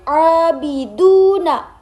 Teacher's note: Huruf ain itu ada mad thobi'i. Alif dibaca panjang dan abidu du itu ada mad thobi'i. Wau dibaca panjang juga.